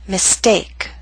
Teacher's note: Note with the ST we do not have the strong puff of air.